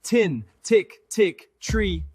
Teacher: For T, your tongue quickly taps behind the teeth. Air stops suddenly.